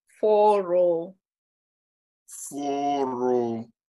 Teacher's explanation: The first one rises on the O sound and the second O falls. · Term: rising and falling